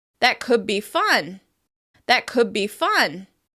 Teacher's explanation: the /d/ sound of could may change into the /b/ sound instead